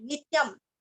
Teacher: नी के ऊपर आघात देना है